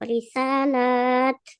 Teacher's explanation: Lamnya panjang kalau wakaf.